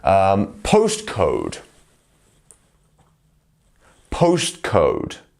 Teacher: It's very, very light. You can hardly even hear that T. · the T's are very light. We don't want to over-enunciate them. We don't want to say postcode.